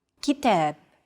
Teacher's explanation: Notice that the second syllable is stressed. It's pronounced longer and louder, while the first and final syllables are shortened.